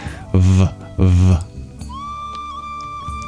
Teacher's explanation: a V, you touch your lip to your teeth. It's a labiodental sound.